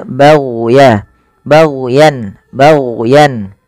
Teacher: hati-hati jangan sampai memantulkan huruf gain karena huruf Gin bukan huruf mantul